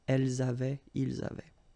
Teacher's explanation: The only difference is that you will have to make the liaison between the two.